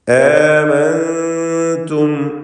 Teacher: ആമൻതും ഈ പദത്തിൽ സാക്കിനത്തായ നൂനും ശേഷം താവും ഇഖ്ഫാ ഹഖീഖി മറച്ച് മണിക്കുക.